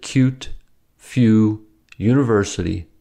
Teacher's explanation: U is not a phoneme, but a composite vowel sound as it can be analyzed into Y plus U.